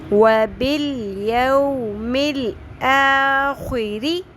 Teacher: رو کے نیچے زیر ہے، باریک پڑھیں گے ری